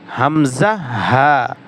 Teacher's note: হলকের শুরু হইতে উচ্চারিত হয় হামজা হা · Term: 1 নম্বর মাখরাজ